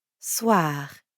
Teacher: we've got that really light gargling in the throat